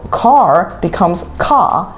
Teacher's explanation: they might drop the R sound.